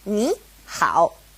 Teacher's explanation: So just remember, if it's a third tone and a third tone next to each other, ni, hao, it changes to a second tone and a third tone, ni, hao. Let's look at some more examples.